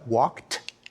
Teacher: past tense suffix ed is actually pronounced in three different ways when we say he walked we pronounce the Ed like a like a t